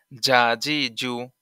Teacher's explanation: জিম জিহ্বার মাঝখান হতে শক্তভাবে আদায় হবে